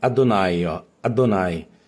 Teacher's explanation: um Hatef Patá, som de A bem curto